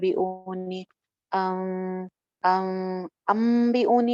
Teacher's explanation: تھوڑا سا سافٹ ہونٹوں کے ساتھ یا بغیر مضبوطی سے ملائے غنہ کرتے ہیں